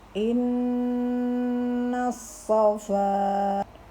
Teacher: nun bertasydid dibaca wajib mendengung. Ukuran mendengungnya sekitar 2 ketukan jari kita.